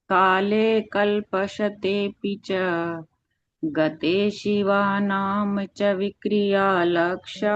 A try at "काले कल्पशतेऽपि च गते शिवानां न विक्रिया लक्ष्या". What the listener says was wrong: नहीं, ना गलत हो जाएगा। न का च कर दोगे तो अर्थ का अनर्थ हो जाएगा। गते शिवानाम न, च